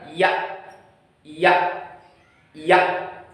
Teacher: Yang kedua yaitu ya, yaitu letaknya ada di atas, di langit-langit rongga mulut kita, dengan keadaan lidah ini yang bagian tengah agak menyentuh langit-langit tapi tidak sampai menyentuh, hampir menyentuh. Kalau kita bunyikan maka akan keluar suara ya, ya, ya.